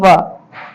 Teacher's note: व के उच्चारण में दंत और ओठ दोनों की सहायता लेनी पड़ती है